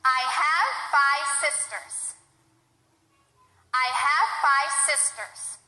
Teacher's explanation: I didn't finish the word. I didn't say the V at the end of the word.